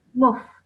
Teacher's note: Don't elongate the mu sound. Straight away join the meme to the fa.